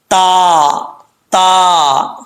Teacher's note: ज़ुबान की नोक ऊपर वाले तालु के ऊपर वाले दांतों की जड़ों से लगे तो ता पढ़ा जाता है